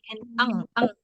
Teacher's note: arahnya itu ke pangkal lidah ya seperti bunyi eng eng eng eng